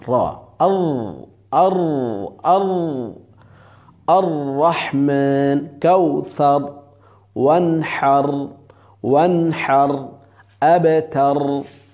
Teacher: রয়ের মাখরাজ হলো জিব্বার উল্টা পিঠ, জিব্বার আগার উল্টা পিঠ তার বরাবর উপরে তালুর সঙ্গে লাগাইয়া র। আর আর আর আর রহমান, কাউসার, ওয়ানহার, ওয়ানহার, আবতার।